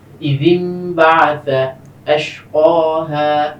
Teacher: তো ইদিন বাআসা, এখানে ছোট একটা মিম আমরা দেখতে পাচ্ছি, নুন সাকিনের পরে বা, বায়ের কারণে ইকলাব হওয়ার কারণে নুনটাকে মিম দ্বারা পরিবর্তন করা হয়েছে।